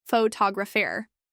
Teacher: photographer shifts the stress to the second syllable